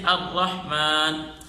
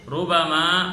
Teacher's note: اسی طرح را غیر مشدد یعنی جس را کے اوپر تشدید نہیں ہے، اس را کے اوپر زبر ہو یا پیش ہو. چاروں صورتوں میں را کو موٹا کر کے پڑھیں گے